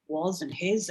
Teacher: the S is slightly voiced at the end